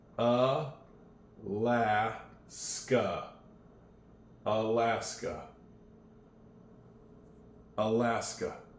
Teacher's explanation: Your tongue is sort of relaxed. It's not down at the bottom. It's not way up at the top. It's just in the middle.